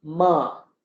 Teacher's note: As you're saying ba, you open your nose and it becomes ma.